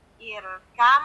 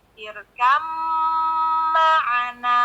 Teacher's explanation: Irkab ma'ana. Jadi ba bertemu dengan mim, bacanya irkam ma'ana gitu. Irkam. Jadi ba-nya udah nggak jadi qalqalah lagi. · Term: idgham mutajanisain